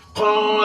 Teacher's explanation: काफ के ऊपर जबर है, का बगैर कैसे पढ़ेंगे, मगर अलिफ जो है ना वो खाली है, उससे पहले जबर है, तो यहाँ अलिफ मद्दा होगा। अलिफ मद्दा को एक अलिफ की मुकदार खींच कर पढ़ेंगे।